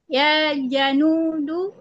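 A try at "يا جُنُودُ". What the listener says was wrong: bukan bukan ja ya bukan anja tapi ju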